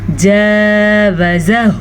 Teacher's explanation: الف مدہ کو بھی ہم نے کھینچ کے پڑھا اور الٹے پیش کو بھی ہم نے کھینچ کے پڑھا، جبکہ بیچ میں دو زبر ہیں، ان کو ہم نے مقدار کے حساب سے پڑھا۔